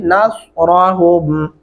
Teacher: स्वाद पढ़ते हुए फिर हमारे होंठ गोल हो जाते हैं